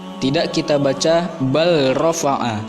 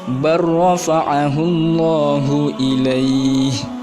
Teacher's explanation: Tidak kita baca bal rafa'a. Lam idgham ke huruf ro, kita masukkan ke huruf ro, seolah-olah lam itu tidak ada. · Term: idgham mutaqaribain